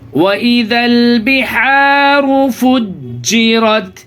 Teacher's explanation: وَإِذَا الْبِحَارُ فُجِّرَتْ، آپ حروف قمری یہاں پہ بھی ہوگا، یعنی الف کو جو بیچ میں الف لکھا ہوا ہے وہ الف کو نہیں پڑھیں گے، ذال کو ڈائریکٹ لام میں ملائیں گے جزم والے